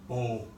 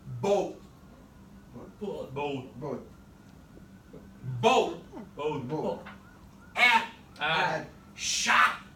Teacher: I want my tongue to touch the teeth, but stop. I don't want it to pop. That's producing that popping sound. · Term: stop T